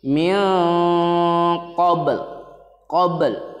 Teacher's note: Nah, ba-nya itu tetap ada qalqalahnya dipantulkan.